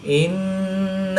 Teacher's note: نون مشدد میں ہمیشہ غنہ ہوتا ہے، تو یہاں پر ہم غنہ آنی کر کے پڑھیں گے